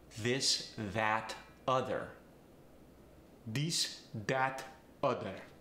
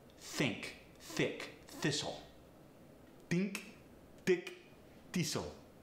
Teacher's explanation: The TH sound either gets changed to the D sound or the T sound, depending on whether it's voiced or unvoiced. A voiced TH gets the D sound.